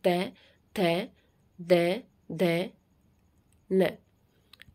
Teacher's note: करेगी उसके बाद आता है दंत व्यंजन ये वो व्यंजन है जब इनका उच्चारण करते हैं तो हमारी जीभ दांतों को क्या करती है स्पर्श करती है